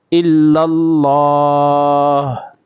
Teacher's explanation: الا اللہ آگے وقف، تو یہاں پہ ہا کی آواز آنی چاہیے